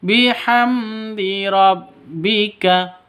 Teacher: Bihamdi, mim mati bertemu dengan dal. Cara bacanya jelas terang karena bacaan izhar safawi.